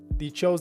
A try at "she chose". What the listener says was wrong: The only thing is you said they chose, but it's she chose. She chose. I think you said they. They chose.